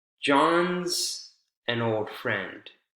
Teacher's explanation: john's instead of is just z consonant sound so the vowel sound is omitted all together